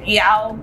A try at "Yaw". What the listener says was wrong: No, relax. Yaw. You say that name like a crying Yaw.